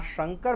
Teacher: આ શંકર ભગવાનવાળો જે શ છે એ તાલવ્ય શ છે